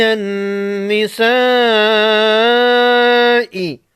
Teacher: بڑی مد کو 5 الف کے مقدار کھینچ کر پڑھیں گے